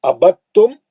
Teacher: ابد تم دال نہیں پڑھیں گے تو تا میں چلے جائیں گے